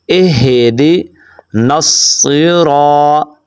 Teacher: نون کو آپ نے صاد کے ساتھ ملانا ہے